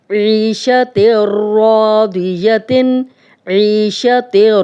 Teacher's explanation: تا اور را مل رہے ہیں، یہاں پہ تنوین کے بعد را آ گیا تو یہاں پہ ادغام ہو رہا ہے لیکن غنہ نہیں ہو رہا، غنہ کے بغیر، ادغام بلا غنہ۔